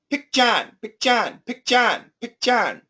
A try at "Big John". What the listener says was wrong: And with no stop sound, Big John, can you say it?